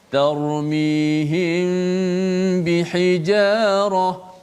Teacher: Kita rapatkan kedua-dua bibir kita, dan seperti biasa hukum ikhfa syafawi ni kita kena panjangkan gunnah kita.